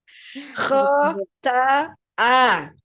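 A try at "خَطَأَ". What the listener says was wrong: Jangan dilembut, jangan lembut huruf hamzanya. Khota'a.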